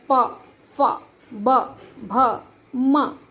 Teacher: ओष्ठ ये होंठ से, प वर्ग। जब हम इनको बोलते प वर्ग वाले वर्णों को, व्यंजनों को जब बोलते हैं तो ओष्ठ का यूज होता है